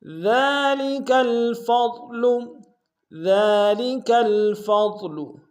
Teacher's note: ذال کے اوپر کھڑا زبر ہے، ایک امتداد میں کھینچیں گے، کاف کو لام کے سامنے آئیں گے، فا کو ضاد کے سامنے آئیں گے، ضاد کو موٹا ادا کریں گے۔